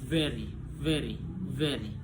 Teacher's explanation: Nama bunyinya itu voice labiodental fricative. Penjelasannya place of articulation labiodental, manner of articulation fricative.